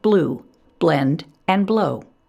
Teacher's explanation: easily blends into the consonant that follows when producing l blends we want to avoid adding a schwa in front of the l